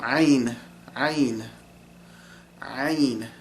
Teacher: And ayn is done with the epiglottis. And the letter ayn is basically, it's kind of hard to explain, but you're you're using the epiglottis to kind of squeeze the air and make that noise.